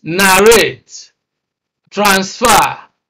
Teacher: all these words are two syllable verbs and they have stress on the second syllable